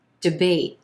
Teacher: First syllable, very quick and short, with our second syllable being emphasized, and the A is in gray sound is our most prominent sound.